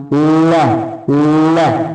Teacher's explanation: जिभ्या पीछे की तरफ सिकुड़ेगी और वायु दोनों तरफ से निकलेगी। ल तो जिभ्या अपनी ऐसे इस तरीके से हल्की सिकड़ेगी और वायु जो है वो दोनों तरफ से निकलती है। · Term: पार्श्विक